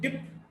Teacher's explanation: P is a voiceless bilabial plosive